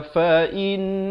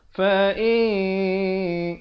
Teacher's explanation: Ikhfa ialah kita menyamarkan ataupun mensamarkan bunyinya. Dia samar-samar gitu. Nak kata nun pun tidak, kaf pun tidak.